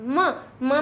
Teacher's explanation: निकल के नासिका इसके साथ में जुड़ जाता है म म में हमारे ओट भी काम आते हैं और हमारी नासिका काम आती है